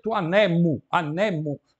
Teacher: o acento passou da antepenúltima para a penúltima. Por quê? Porque a última é longa. E o acento só pode ficar na penúltima se a última for breve. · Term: paroxítona